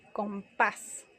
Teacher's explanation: Compás termina en S y recae el acento en la A